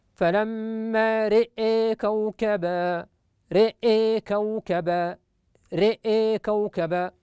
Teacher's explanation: إذن عندما يصل كلمة رأى بكلمة كوكب، فإن شعبة وهو الراوي الآخر عاصم يميل فتحة الراء ويميل أيضا الهمزة